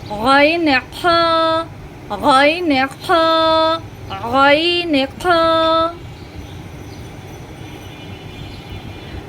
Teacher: 3 নম্বর মাখরাজ হলকের শেষ হইতে, মানে গলার শেষ হইতে, গলার শেষ অংশ।